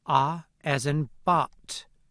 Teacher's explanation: we also have only one low-back vowel: [ɑ] as in bot